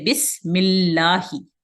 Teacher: لفظ اللہ میں جو مشدد لام ہے اس سے پہلے والے حرف پہ اگر کسرہ ہو تو یہ لام پھر ترقیق سے پڑھا جاتا ہے، باریکی سے پڑھا جاتا ہے